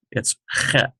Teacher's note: this is sort of a guttural sound like ch. It's not ch, it's chet. And it's sort of a hoarse H sound.